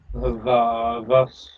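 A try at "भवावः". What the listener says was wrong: Close. Remember to substitute that coda S. We aspirate it. Bhavavaha. In an actually occurring word form, yes, it does.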